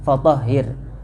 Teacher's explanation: Enggak tafkhim tapi tipis.